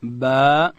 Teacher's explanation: اوس حرف با ده، دا به د دواړو شونډانو د مشلیدو څخه ادا کوو، د لندې حصې څخه